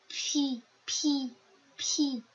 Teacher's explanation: chúng ta sẽ dùng môi để phát âm ra âm này. Pi, pi, pi, bật hơi mạnh hơn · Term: phụ âm bật hơi